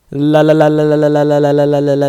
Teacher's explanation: the L sound represented by your tongue touching the roof of your mouth